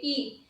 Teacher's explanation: ई को जब हम बोलते हैं तो हमारे ओष्ठ की आकृति गोल नहीं होती है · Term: आवृतमुखी